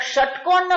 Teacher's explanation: ષટકોણનો ષ કહીએ તો કયો છે મૂર્ધા છે આપણી જીભ ક્યાં લાગે ઉપર તાળવા પર લાગે